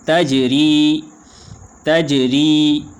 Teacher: جیم کے اوپر قلقلہ ہوگا، را باریک ہوگی اور آخر میں یا ساکن ہے تو یا ساکن وقف کی حالت میں بھی اسی طرح پڑھا جائے گا۔